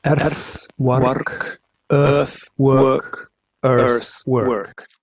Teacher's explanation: El hecho de que en la zona norte se va a pronunciar con esta vocal posterior, central semiabierta, perdón, anterior semiabierta no labializada, y además el fenómeno del rotacismo